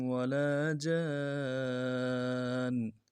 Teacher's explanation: لام کے ساتھ الف مدہ ہے، ایک الف دار میں کھینچیں گے